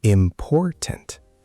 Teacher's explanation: The stress is on por, the middle syllable.